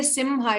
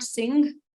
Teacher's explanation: Okay, Simha. So we have to pronounce the Makara fully because it is before Ha